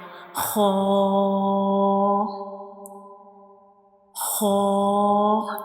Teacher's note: So this is the inner view of mouth and this is the origin of haw. Haw is pronounced from the upper portion of the throat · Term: throat letter